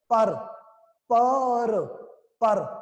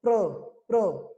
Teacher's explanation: ਪ ਵੀ ਪੂਰਾ ਸਾਊਂਡ ਕੀਤਾ, ਰਾਰਾ ਵੀ ਪੂਰਾ ਸਾਊਂਡ ਕੀਤਾ, ਉਹਦੇ ਵਿੱਚ ਆੜਾ ਵੀ ਸਾਊਂਡ ਕੀਤਾ, ਪਰ, ਪਰ, ਪਰ, ਰਾਰਾ ਪੂਰਾ।